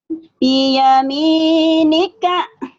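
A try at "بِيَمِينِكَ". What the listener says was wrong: Iya, bagus.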